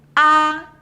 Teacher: The first tone, ā, is high and flat just like when dentist ask you to open your mouth.